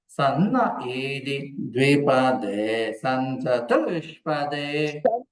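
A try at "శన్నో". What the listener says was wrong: షా చెప్పాలండి, సా కాదు, షా చెప్పాలి. షన్నో జుషస్వ.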